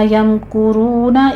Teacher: लियम कुरू में करू नहीं पढ़ना आपने, पहले मीम साकिन का इजहार शफ़ी है, आगे काफ के ऊपर देखिए ज़म्मा है, होंठ गोल कर लीजिए, आगे वाव मद्दा है, 2 काउंट कीजिए।